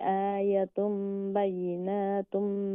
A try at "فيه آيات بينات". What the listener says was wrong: آيات آيات آيات দুটো লম্বা হইব।